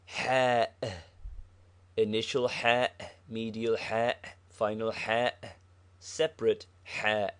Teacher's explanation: is a heavy H from the back of the mouth.